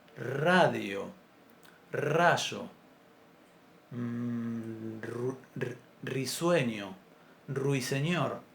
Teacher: en castellano nunca la pronunciamos como vibrante simple a inicio de palabra. Cualquier palabra que comience con la letra R en castellano se va a pronunciar radio, rayo, risueño, ruiseñor. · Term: vibrante múltiple